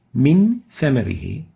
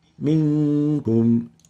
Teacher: So we have a Nun Sakinah followed by a tha in 2 words, and we'll apply Ikhfaa by hiding the noon and then maintaining the Ghunna for 2 units